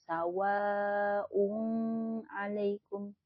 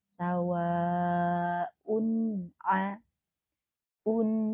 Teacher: tanwin bertemu Ain dinama izhar maka dibacanya harus jelas ya jangan didengungkan